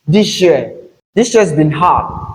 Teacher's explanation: In connected speech, you have this sh in place of s and j. Again, we have the voiced form of the alveolar fricative sound.